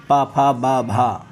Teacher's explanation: बा आपका महाप्राण नहीं होता, सघोष ओष्ठ तो है